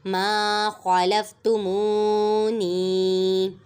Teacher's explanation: خوا حروف مستعلیہ میں سے ہے، اسے پر پڑھیں گے